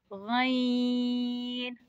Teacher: ग हलक के ऊपर वाले हिस्से से अदा होता है